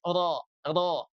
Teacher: kalau ro tebal itu ya dibantu dengan mengangkat bibir bawah sedikit.